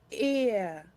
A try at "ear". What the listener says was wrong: You can make it even more blended than that, like this. Ear. Try to use mouth shape 3. Ear.